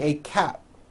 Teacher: I am wearing a cap, and you don't hear the P sound.